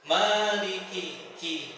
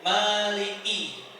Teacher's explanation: Huruf kaf itu memiliki sifat hamas. Hamas niku nafasnya berhembus.